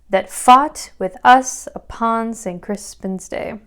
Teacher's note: i'm just emphasizing every other syllable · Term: iambic pentameter